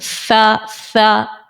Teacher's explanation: के किनारे से दांतों से नहीं उसके किनारे से सा सा जबान का सिरा ऊपर के दांतों के किनारे से लग रहा है